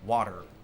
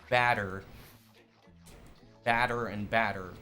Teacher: Um, in the English language, generally with Americans, we tend to pronounce intervocalic D's and T's with a flapped R, like how I say water.